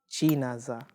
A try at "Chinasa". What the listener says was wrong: We're back to the za again. See, you're singing it, and I get that you're a musician.